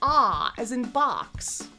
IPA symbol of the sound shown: ɒ